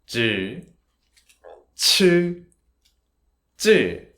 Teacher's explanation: it's higher and stronger sound, but it's not aspirated, so the tissue will not move. See, put your hand in front of your mouth.